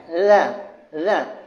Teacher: Huruf zal ini di hujung gigi kacip atas.